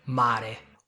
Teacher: Listen to the R, 'mare', with only one vibration.